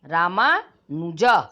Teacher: राम म में अ है और अनुज में भी अ है, तो अ और अ दोनों ह्रस्व को मिलाकर दीर्घ हो जाता है